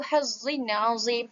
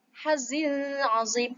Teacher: Bukan hazin azim. Tidak perlu dengung, tetapi kita harus baca secara izhar.